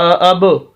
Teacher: قلقلہ کہتے ہیں کہ آواز تھوڑی سی گونجے، آواز کو روکنا نہیں، اس کے اندر تھوڑی سی حرکت پیدا کرنی ہے، وائبریشن پیدا کرنی ہے اس کے اندر